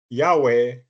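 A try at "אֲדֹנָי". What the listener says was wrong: Okay, so just a reminder, whenever you see Yod He Vav He, they don't say Yahweh, they just say Adonai. That's what they do in the synagogue.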